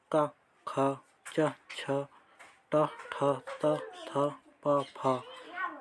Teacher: अघोष वे वर्ण जिनके उच्चारण में स्वर तंतियां कम झंकृत होती हैं। सभी वर्ग का प्रथम एवं द्वितीय वर्ण अघोष होता है।